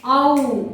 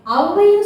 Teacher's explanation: அவ் என்ற எழுத்தை தனியாக ஒலிக்கும் பொழுது அவ் இரண்டு மாத்திரை ஆனால் அவ்வைன்னு சொல்லும்பொழுது தனக்குரிய இரண்டிலிருந்து குறைந்து ஒன்றை மாத்திரையாக ஒலிக்கும் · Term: அவகார குறுக்கம்